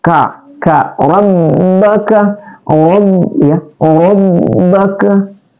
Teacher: Ka adalah huruf akasal lisan, keluar di pangkal lidah.